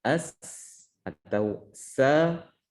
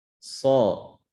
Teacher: Makhrajnya sama, pasti akan beda di sifatnya. Maka tinggal kita kembali ke makhraj sin, misalkan as atau sa, kemudian ditebalkan so. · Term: huruf shad